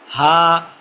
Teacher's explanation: গলাটাকে বলা হয় হলক। হ্যাঁ, হলকের শুরু হইতে হামজা হা, কোথাও বাধা খাবে না, ভিতর থেকে একবার বের হয়ে যাবে